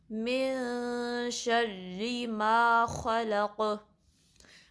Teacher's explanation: قاف ساکن ہے تو اس پہ قلقلہ ہوگا، یعنی آواز پلٹ کر واپس آئے گی